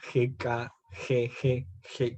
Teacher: son sonidos que hacen como un raspado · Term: el sonido de la jota